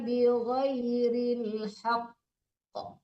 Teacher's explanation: Ditahan dulu baru dipantulkan. Karena dia bertasdid. Kalau enggak bertasdid baru dilepas langsung haq.